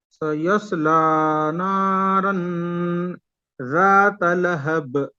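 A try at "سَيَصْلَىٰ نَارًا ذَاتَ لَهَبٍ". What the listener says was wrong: देखिए ये सीन ये साद दोनों को अलग अलग कीजिए।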